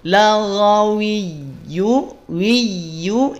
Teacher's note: La tipis, gha tebal. Naikin pangkal lidahnya. Laghawiyu, wiyu, ya bertasydid maka tekan.